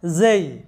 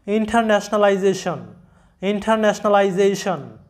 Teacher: এস এর উচ্চারণটা কিন্তু জ, জ এরকম, মৌমাছি যেমন সাউন্ড করে ওরকম মৌমাছির আওয়াজের মতো জ এরকম জ সাউন্ডটা আসে। কারণটা হচ্ছে যে এস এর আগে আছে ভাওয়েল এবং পরেও আছে ভাওয়েল।